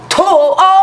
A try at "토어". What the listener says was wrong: 토어가 아니라 토어 더 높이 토어 토어 토어가 아니라 토어 토어 토어가 아니라 토어 그 음을 가지고 토어